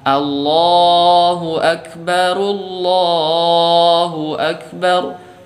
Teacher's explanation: Di lafzul jalalahnya sudah betul, tapi di hamzah wasolnya juga ikut ditebalkan.